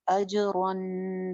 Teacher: जीम पे कलकला, रॉ मोटी पढ़ेंगे · रन पे हम इख्फा करेंगे। इख्फा का तरीका आपको पता है, नून के मखरज के करीब जुबान लेके जाएंगे। अजरन बारीक इख्फा है, मोटा नहीं, अजरन नहीं, अजरन फहुम, फ सिंगल हरकत।